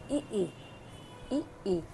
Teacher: तालु से कौन से मूल स्वर निकलते हैं, ई निकलते हैं।